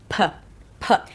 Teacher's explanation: The P sound is produced with the lips closing, the air pressure builds up, and then you release the air with a puff.